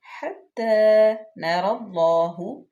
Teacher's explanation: تا مشدد، را پر پڑی جائے گی. لام اللہ کے لام اسم جلالہ سے پہلے زبر آ گیا تو یہ بھی پر پڑی جائے گی